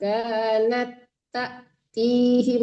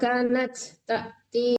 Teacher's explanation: Kanat nggak boleh diputus ya Bu. Dia kan menyambung ke tak.